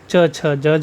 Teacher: तालू से च वर्ग बोला जाता है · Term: तालव्य व्यंजन